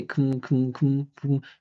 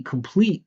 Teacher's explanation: the first syllable is unstressed. It finishes with an M. It's a reduction. We're not going to pronounce the vowel sound at all.